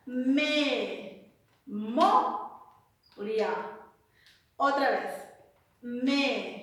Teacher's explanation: 3 sílabas. La mayor fuerza de voz es mo. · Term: sílaba tónica